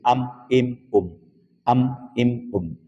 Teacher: ya nisbah ya ya nisbah maka disebut syafawiyun nisbah kepada bibir kerana mim itu makhrajnya bibir keluar daripada bibir